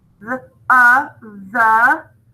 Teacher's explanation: Voiced TH with a schwa.